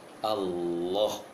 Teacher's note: Allah, seharusnya Allah, mengarah ke A, ke O sedikit.